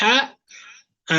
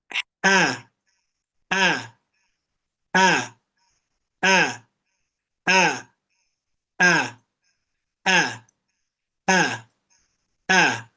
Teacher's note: Ujung lidahnya sejajar dengan gigi saya di bagian bawah. Tengahnya datar, pangkalnya datar. Tenggorokannya menyempit. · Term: huruf ha